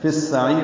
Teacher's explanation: فی السعیر میں فا سین سے ملا دیں گے، ادغام ہوگا، ادغام شمسی ہے، الف لام نہیں پڑھا جا رہا، عین وسط حلق سے ادا ہوگا، اس کو لمبا کریں گے، را باریک پڑھیں گے کیونکہ اس سے پہلے یا ساکن ہے۔ فی السعیر، یاد رکھیں جب یا ساکن کے بعد را ساکن ہو وقفاً تو وہ را باریک ہوتی ہے، ویسے بھی اس را کے نیچے زیر ہے، ملا کر پڑھنی ہو تب بھی یہ را باریک ہی ہے۔